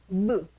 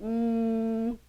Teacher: Ahora, eso tiene una razón, porque si ustedes estudian fonética, van a ver que estas consonantes de acá, uy, estas consonantes son bilaviales, o sea, se pronuncian con los dos labios